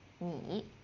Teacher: Ni is the low one, the third tone.